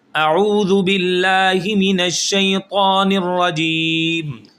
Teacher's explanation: اب یہاں پر نرواجیم نہیں کرنا، را کو موٹا کریں گے، لپس گول نہیں کرنے